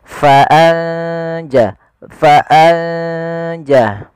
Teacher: Tapi bacaan ikhfa yaitu kita samarkan ke huruf setelahnya. Kalau di sini huruf jim, maka nunnya samarkan ke huruf jim.